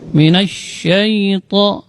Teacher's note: huruf sya keluarnya dari tengah-tengah lidah. Ini termasuk huruf tafasyi.